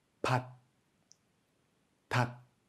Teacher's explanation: Tout comme le kiok, en fin de syllabe, le son du tiget est aspiré.